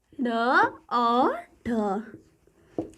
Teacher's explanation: जो हमारे जीभ का अगला हिस्सा है वो अचानक से उठकर हमारी मूर्धा को स्पर्श करे, यानी उसको टच करेगा, तो वो क्या कहलाएगा, इस उच्छिप्त व्यंजन कहलाएगा।